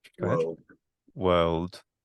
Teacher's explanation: Maybe a bit more velar with the L.